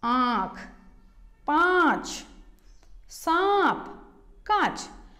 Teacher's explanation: ठीक है, माँ, हम जब बोल रहे हैं तो क्या हो रहा है, हमारा मुंह ज्यादा खुल रहा है और नाक की तरफ से आवाज बाहर आ रही है